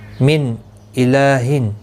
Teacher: نون ساکن کے بعد حمزہ آیا ہے، اظہار حلقی ہوگا